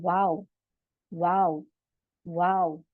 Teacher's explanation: दोनों होठों के गोल करने से अदा होता है वाव